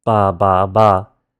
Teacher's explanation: Ba, ba, ba. But the English B sound, you have to drag it out to make it clear that it's voiced.